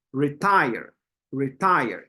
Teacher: You can feel how we're stressing that second part or the second syllable. We're pronouncing it harder.